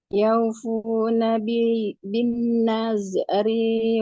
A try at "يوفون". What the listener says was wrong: Yufu bukan yaufu.